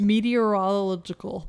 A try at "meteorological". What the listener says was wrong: You still can't say it. Meteorological. You're forgetting the logical. Meteorological.